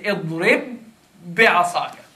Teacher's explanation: It is, in fact, you are making a shadda from the two letters. · this is a ba. And it's followed by the same ba. And they're both coming from the same exit. And thus, I'm going to stop on it, on one, and move it on the next one. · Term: idgham mutamathilain